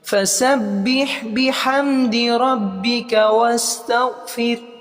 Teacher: با پہ مشدد ہے، تشدید ہے اور ہا ساکن ہے، ہا کی بھی آواز آئے گی